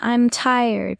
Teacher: Voice goes down. Shows finality. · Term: falling tone